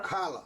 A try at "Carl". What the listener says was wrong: Carl. Not Carla. Just Carl.